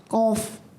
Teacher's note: ज़बान की जड़ और तालु का नरम हिस्सा